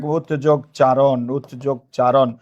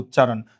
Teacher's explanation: দুইটা দুই রকম বর্ণ, একরকম বর্ণ হয়েছে, সমীভবন। আগেরটা গিয়ে পরেরটার মতো হয়েছে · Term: পরাগত সমীভবন